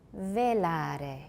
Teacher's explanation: it sounds like a very short trill at the end or a tap